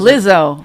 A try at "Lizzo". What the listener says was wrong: Why are you adding extra syllables? I don't understand. Lizzo.